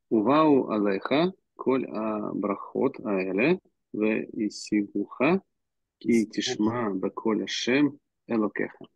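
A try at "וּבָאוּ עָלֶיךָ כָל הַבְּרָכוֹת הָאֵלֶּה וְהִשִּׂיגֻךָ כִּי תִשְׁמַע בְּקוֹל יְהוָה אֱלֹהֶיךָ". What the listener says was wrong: Молодец.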